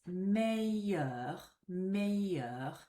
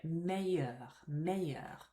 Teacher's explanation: But if you pronounce it like this, meilleur, meilleur, there's no hint of an L when you say it